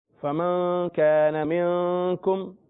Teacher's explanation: دونوں جگہ غنہ ہے، فمن پہ بھی اور من اگلا، کیونکہ دونوں کے بعد کاف آ رہا ہے